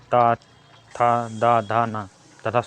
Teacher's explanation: व्यंजनों का उच्चारण करते समय जिह्वा की नोक ऊपरी दंत पंक्ति का स्पर्श करती है। दंत में हो गया ता था दा धा ना तथा सा व्यंजन दंत में आते हैं।